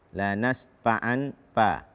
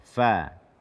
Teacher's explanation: membaca huruf fa tanpa hamas seperti p kita